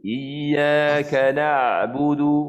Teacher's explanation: Huruf ain ni pastikan betul-betul point makhraj itu di tengah kerongkong kita. Iyyaka jangan bunyi di hidung.